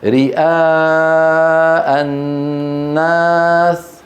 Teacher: فنمده وصلا 4 حركات أو 5 حركات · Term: المتصل